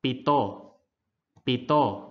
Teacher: and start next we have the consonants p t and k pronounce the sound without the puff of air coming from your mouth